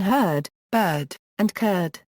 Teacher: Scottish English makes a distinction between the vowels in herd, bird, and curd.